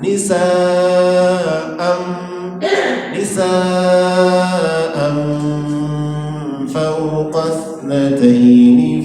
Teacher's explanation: Nisa'am itu ikhfa. Jadi ketika membaca amnya itu posisi bibir kita sudah pada makhraj huruf fa. Fa itu gigi atas dan bibir bawah